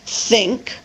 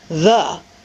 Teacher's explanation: There's the voiceless TH as in think, and the voiced TH as in the.